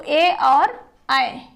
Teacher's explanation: ए और ऐ इन दोनों का उच्चारण कंठ और तालू दोनों के संयोग से होता है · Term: कंठ तालव्य वर्ण